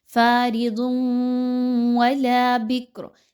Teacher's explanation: ضاد کے اوپر 2 پیش کی تنوین کے بعد واو کا حرف آ گیا ہے اور یہاں پر ادغام کا حرف آ گیا واو، تو یہاں پر ادغام مع الغنہ کیجئے، ایسا ادغام کہ جس میں غنہ شامل ہو، آپ نے تنوین کی آواز کو واو کی آواز کے ساتھ مکس کرنا ہے غنہ کرتے ہوئے۔ فارض ولا بکر، لام الف زبر لا الف مدہ ہے، 1 سے 2 حرکت کے برابر اس کی ادائیگی رکھیے۔